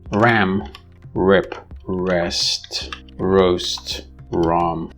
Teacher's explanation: So the sound ra in all of these is pronounced ra, which happens to be this sound, the approximant ra, the voiced alveolar approximant